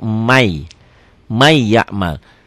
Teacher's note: tulisan dan bacaan beda ditulisnya Man ya'mal dibaca jadi May jadi double double Y ya n-nya hilang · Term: Idgham Bighunnah